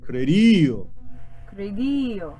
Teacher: flip the D, flip the R, and lean on the E.